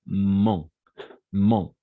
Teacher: C'est un peu avec une nasalisation et comme un O